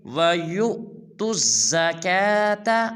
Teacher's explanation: آپ ذرا توجہ کریں کہ یا کے بعد پیش ہے، اس کے اوپر ایک حمزہ ہے، تو ہم واو نہیں پڑھیں گے بلکہ یا کو حمزہ کے ساتھ ملائیں گے اور جوڑ کریں گے، یا حمزہ پیش یو، یعنی کہ جھٹکا ماریں گے